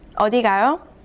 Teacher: But if you add a question mark and read the last syllable with a rising tone, the whole sentence means where are you going?